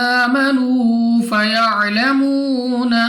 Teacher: واو ساکن سے پہلے پیش تو واو مدہ کو بھی ہم نے 2 سیکنڈ تک لمبا کرنا ہے۔